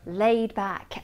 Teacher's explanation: With this adjective, the D at the end of laid is not released. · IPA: /leɪd/